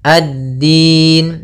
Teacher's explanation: Nah, di sini pada lafal dinya yaitu kita usahakan menekan di dal. Makhraj huruf dal yaitu ujung lidah kita menempel dengan apa? Batasan akhir dari gigi sari atas dan gusi atas. · alif lam yang ditulis tapi tidak dibaca langsung ke huruf dal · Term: alif lam syamsiyah